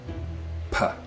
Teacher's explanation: sound like a p like a pa right we're going to close the lips here the air is coming up through the vocal tract and it gets stopped and then air pressure builds up until it explodes out in a puh